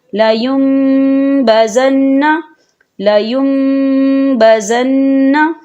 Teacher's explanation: میم کے ساتھ ملا کر پڑھیں گے، نون ساکن کو بالکل نہیں پڑھیں گے · تو ہم یہاں غنہ کریں گے اور غنے کی مقدار 2 سے 3 سیکنڈ ہوگی،